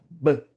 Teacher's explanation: O B ela mostra pra criança que o som aqui sai da garganta